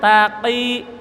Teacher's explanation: qaf beda dengan kaf. Kalau qaf ada ceklukannya